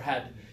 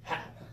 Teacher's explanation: That's what you have to listen for, had. And then for hat, there's no sound at the end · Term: glottal stop